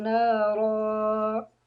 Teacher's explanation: را جو ہے اس کو موٹا پڑھنا ہے، اور جب وقف کریں گے 2 زبر ہوں تو وہاں وقف کرتے ہوئے 1 زبر اور 1 الف پڑھا جاتا ہے